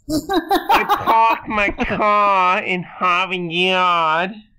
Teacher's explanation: if you say it in like a vaudeville version, leaving all those R's out, you're non-rhotic. If you say it with all the R's in, you're being rhotic.